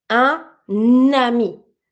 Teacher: So I'm going to pronounce my un first word the way it's supposed to be said, spelled, and the second one the same. I'm just going to re-pronounce my N over my first sound to connect with my second word. · I'm going to link my N consonant and my A vowel together. And instead of saying un ami, I'm going to say un ami. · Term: liaison